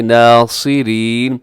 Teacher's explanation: ناصرین میں صاد موٹا ہوگا, اگرچہ اس کے نیچے زیر ہے لیکن اس کے باوجود ہم اس کو موٹا رکھیں گے. ناصرین سین نہیں بنائیں گے, اس کو صاد ہی رکھیں گے.